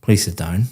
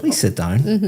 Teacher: Very flat intonation going down.